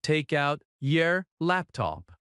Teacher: In fast speech, take out often links and sounds like ta cout.